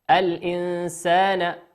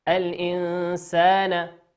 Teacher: الإنسان، نون ساكنة أتى بعدها حرف السين، وقلنا السين من حروف الإخفاء